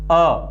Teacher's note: अ में जो उच्चारण प्रयत्न होता है वो कौन सा प्रयत्न लगता है? इसके अंतर्गत केवल और केवल विवृत प्रयत्न लगता है।